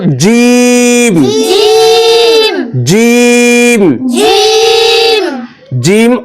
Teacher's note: জিম বলার সময় তিন আলিফ টেনে পড়তে হবে